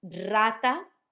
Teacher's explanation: Rata sounds like a rolled R, a strong one, because it's at the start of the letter, or of the word.